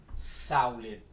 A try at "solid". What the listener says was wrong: Sounds like you're saying salad with a really Terrible accent.